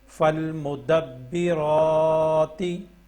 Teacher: را کے اوپر بھی کھڑی زبر ہے، تو اس کو 1 سیکنڈ لمبا کرنا ہے، یعنی 1 الف کے برابر لمبا کرنا ہے۔